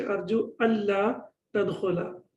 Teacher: We say that idgham without ghunna, yeah, bidun ghunna. That after noon sakin, when we have lam and ra, then the noon gets dropped, or we don't pronounce it